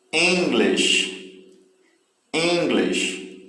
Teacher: Aí bem claro aí que a sílaba que tem mais força aí é a primeira